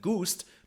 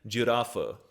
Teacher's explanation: turning from a hard G noise in gust to a soft J noise like in girafa